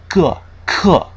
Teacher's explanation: we're letting air build up in the back and then releasing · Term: velar consonants